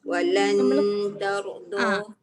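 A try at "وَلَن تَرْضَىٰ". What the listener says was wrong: Renggangkan sikit lagi ke bawah lagi lidah tu. Walan. Jelas bunyi nun. Jelas bunyi nun. Walan. Lan kan LAN bunyi dia. Dia bukan LAN. Syarat dia memang tak boleh kena. Kalau dia kena, dia dah ada kesilapan kat situ. Dia bukan ikhfa tapi dia jadi izhar.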